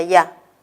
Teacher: Recuerden que si yo tengo dos vocales, la I y la A, la que suena más va a ser la A, ya. Y en el caso de perdió, entre la I y la O, la que suena más va a ser la O, yo. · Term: diptongo